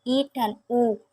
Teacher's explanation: Vokal tinggi atau atas yang dibentuk apabila rahang bawah merapat ke rahang atas